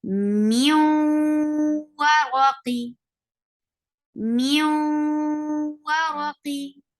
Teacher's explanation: So if we say it separately, that was min waraqin. But now we are merging the sound of noon sakin into waw, then it will become mew. We are keeping the sound in our nose and we are going towards the makhraj of waw.